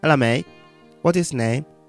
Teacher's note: I used glottal T's everywhere, but I didn't drop the H.